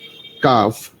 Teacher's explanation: পাঁচ নম্বর মাখরাজ জিভের গোড়ার একটু আগে ওপরের তালুর সাথে লাগিয়ে